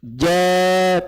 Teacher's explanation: ja tengah lidahnya terangkat, gak boleh dibaca jo